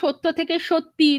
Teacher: সেইটা ই মানে একটা আলাদা ই ধ্বনি এসে যুক্ত হচ্ছে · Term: অন্তঃস্বরাগম